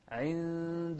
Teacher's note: إخفاء هني، نون ساكنة أتى بعدها حرف الدال، وحرف الدال من أحرف الإخفاء.